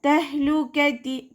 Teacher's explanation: കാഫ് ഉച്ചരിക്കുന്ന സമയത്ത് കുറച്ചൊന്ന് ചെരിച്ചു കൊടുക്കുക. ലൈറ്റ് ആക്കിയിട്ട് ഉച്ചരിക്കുക